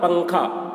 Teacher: نون کی آواز کو ناک میں چھپا کر پڑھنا چاہیے۔ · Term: اخفا